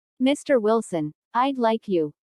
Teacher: Notice the rising intonation on Mr. Wilson, which is used to address someone. Listen for the D in I'd like.